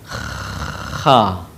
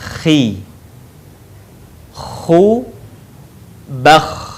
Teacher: Huruf ini dikeluarkan dari tenggorokan yang terdekat dengan rongga mulut kita. Ciri khasnya terdengar suara seperti orang yang sedang mendengkur. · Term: huruf kha